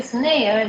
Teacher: in the snail, the N can be devoiced after the voiceless sound S. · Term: devoicing n